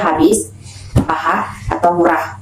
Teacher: konsonan frikatif glotal H itu dibentuk dengan melewatkan arus udara di antara pita suara yang menyempit sehingga menimbulkan bunyi desis tanpa diangkat tempat lain.